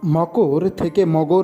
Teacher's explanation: ক এটা ছিল অঘোষ এবং গ এটা ঘোষ তার জন্য এটা ঘোষী ভবন হয়েছে নেক্সট কোশ্চেন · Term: ঘোষী ভবনের উদাহরণ